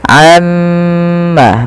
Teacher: Baik, kita perhatikan teman-teman pada lafal bacaan amma yatasaalun. Di sini kita harus menahan bunyi suara mim yang berharokat tasydid karena dia termasuk daripada bacaan gunnah. Nah, ini jangan kita langsung baca amma yatasaalun, tapi tahan dahulu gunnahnya atau bunyi suara mimnya sepanjang 2 harokat.